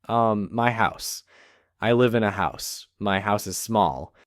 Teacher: house ends with the ses sound, not a z.